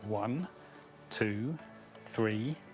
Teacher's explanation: we have a rising intonation on the hours so it's like one 23 and then a falling intonation on